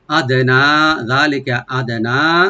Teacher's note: আদানা, হামজাকে right দিবেন, দালটাকে একটু আমরা কলকলা করব। আদানা, নুনটাকে এখানে আমরা তিন আলিফ টানবো, মধ্যে মুনফাসিল